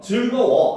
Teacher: 우 더하기 어가 워가 되죠. 바로 모음 축약이 일어나는 모습입니다